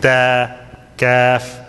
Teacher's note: So other than the 7 harf, we need to open them out this way as smiling. So the tongue will sit in the bottom, in the lower portion, and the harf will become light. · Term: Huruf al-istifal